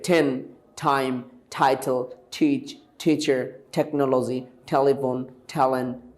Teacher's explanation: টি এর উচ্চারণ আমরা সাধারণত ট বলতাম, এখন থেকে কি হয়ে যাবে? ঠ হয়ে যাবে।